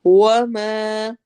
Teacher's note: वाव में होंठ गोल होंगे और मा में अलिफ मद्दा होगा